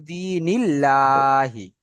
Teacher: আল্লাহ শব্দের আগে নুনের নিচে জের এসছে মানে এটা বারিক পড়ব